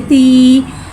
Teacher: या साकिन है, जा साकिन से पहले ज़ेर आ रहा है, या मद्दा हो रहा है, लिहाजा या मद्दा को एक अलिफ यानी 2 हरकत के बराबर खींच के पढ़ेंगे।